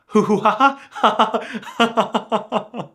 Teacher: Belgians do not tend to make this harsh G sound. It's a lot closer to an H in their dialect